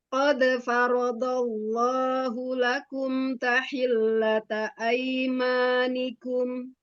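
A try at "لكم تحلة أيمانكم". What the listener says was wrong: Di kafnya mau ada hamsnya sedikit ya.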